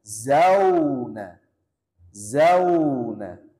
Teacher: kalau dia berharakat fathah maka dilinkan